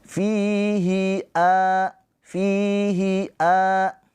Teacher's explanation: Fi panjang 2 harokat karena ada pemanjangnya yaitu ya sukun. Ya sukun sebelumnya harokatnya kasroh. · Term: mat tabi'i